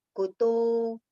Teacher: Kuto, ku short, to long